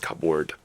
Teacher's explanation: you don't pronounce the P at all when you pronounce cupboard, right? So it's just cupboard. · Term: silent letters